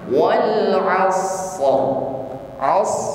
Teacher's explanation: lisan bergetarnya ujung lidah birtiadan khofiah dengan getaran yang lembut ya jadi rnya di sini posisinya tafkhim harus tebal bergetar dan getarannya tebal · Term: huruf ro